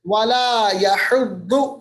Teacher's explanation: مد عارض وقفی یہ بھی مد عارض وقفی ہے ولا یحض ضاد کو پر پڑھیں گے ضاد کو پڑھتے وقت تھوڑا سا کروٹ کی طرف منہ چلا جاتا ہے موٹا پڑا جاتا ہے